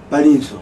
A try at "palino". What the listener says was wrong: Palino. Not palinso, palino.